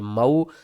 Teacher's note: حروف لین ہے، جلدی سے اور نرمی سے پڑھیں گے